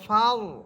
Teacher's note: মোটা করে ফাল, মুখ ভরে উচ্চারণ করবেন।